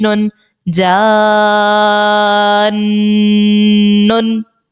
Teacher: ٹھیک ہے، یہاں پر ہم پڑھ چکے ہیں مد لازم کا قاعدہ ہوگا، الف مدہ کے بعد سکون اصلی ہے نون کے اوپر مد لازم کا، اور 6 حرکات کی مقدار اس کو کھینچ کر ادا کریں گے